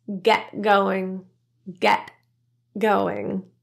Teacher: the nasal NG sound in going is produced with the back of the tongue rather than an N with the tip of the tongue the G is not pronounced that NG is a completely individual